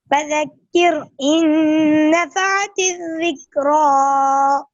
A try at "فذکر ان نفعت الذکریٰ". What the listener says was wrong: اتنا لمبا نہیں کرتے ہیں، اے را غلط ہے. فذکر ان نفعت الذکریٰ.